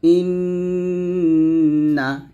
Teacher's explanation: রাখলেন জিহ্বাটা উপরের তালুতে ধরে রাখলেন ইন এটা হচ্ছে গুন্না আর গুন্নাটা মূলত এক এক আলিফ পরিমাণ টেনে পড়তে হয়